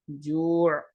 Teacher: جو کے بعد ہمیں غنہ کی آواز نہیں پیدا کرنی